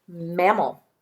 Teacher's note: In the second syllable, the vowel will be an A. It just makes the schwa sound.